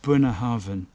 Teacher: when you've got a B and a H together like you've got there, actually in Gaelic it becomes a V, a V sound